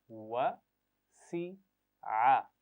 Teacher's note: होठों को गोल करते हुए वाव का मखरज है